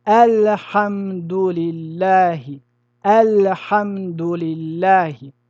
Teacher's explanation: هنا التعريف لام ال وبعدها ح والحاء من حروف الإظهار مع ال فنقول الحمد لله الحمد لله فنخرج اللام من مخرجه من غير إدغام ولا إخفاء